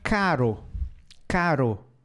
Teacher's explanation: tremidinha na ponta da língua tá certo